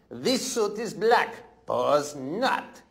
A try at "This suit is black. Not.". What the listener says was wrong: No, you don't say pause. This suit is black. That's a pause. Not.